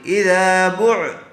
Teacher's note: با عین پیش بع، عین کے اوپر جزم ہے، اس لیے با کو عین سے ملا دیں گے